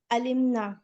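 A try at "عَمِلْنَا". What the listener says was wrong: आलिम है या अमिल है? आमिल ना,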